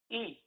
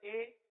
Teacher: اگر اس کو مجہول کر دیں گے یا اس طرح پڑھیں گے آ اے او، اے مجہول ہو جائے گا. تو اے نہیں پڑھنا بلکہ ای پڑھنا ہے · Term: معروف طریقہ